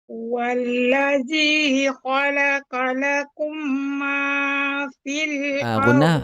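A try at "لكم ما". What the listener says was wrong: Ghunnah jangan tinggal. Khalaqa lakum, itu ada ghunnah.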